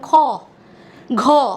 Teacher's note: এর সাথে সাথে আমাদের একটা হ ধ্বনিও আসছে, তাই এগুলোকে বলা হচ্ছে মহাপ্রাণ ধ্বনি